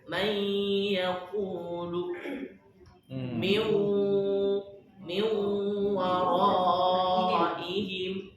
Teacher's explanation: Nunnya hilang. Tapi sifat nunnya hilang enggak? Enggak. Sifat nunnya tetap nempel. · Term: Idgham bigun